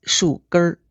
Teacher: 树根 is written 树根儿 but the N is not pronounced as a full N